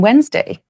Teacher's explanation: ignore the D when pronouncing Wednesday.